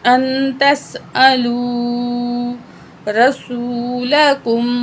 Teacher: रा को मोटा पढ़ेंगे क्योंकि रा के ऊपर ज़बर है